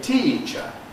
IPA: ˈtiː(unclipped)ʧə